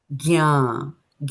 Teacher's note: G. And when you do the G, it's a nasal. There's a nasal there. So you'll feel something at the back of your nose.